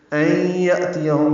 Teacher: یا میں حمزہ ساکن جھٹکے سے پڑھا جائے گا